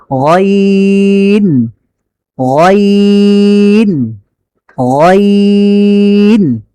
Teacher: কণ্ঠনালীর শেষ হতে গইন উচ্চারিত হয়।